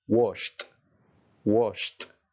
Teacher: Que no le añada una sílaba extra, sino que pronuncie una T.